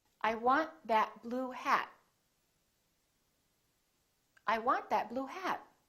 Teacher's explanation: you need to hold the t at the end to have a more american accent